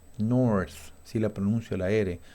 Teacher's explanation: en inglés americano la R se pronuncia bastante, o sea, se pronuncia bien